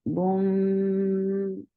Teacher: You're keeping the sound in your nose for a longer time. Boom. And dhamma on meme is very short. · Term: gunna